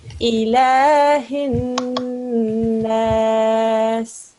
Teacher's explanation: Here is a noon mashaddad. They will be joining, they will be pressing down, and there will be ghunna sound.